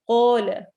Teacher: قاف ہیوی ہوگا اور ایسے ہی الف کو بھی ہم ہیوی یعنی موٹا کر کے پڑھیں گے